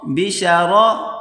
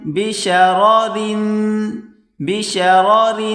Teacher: پہلے را کو موٹا کریں گے، اس کے بعد را کو باریک کر کے پڑھیں گے